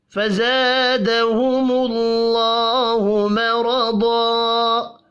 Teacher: فزا الف مدہ ہے، ایک الف کے برابر کھینچ کر پڑھیں گے۔ دہم اللہ، اللہ کا نام پیش کی وجہ سے پر پڑھا جائے گا۔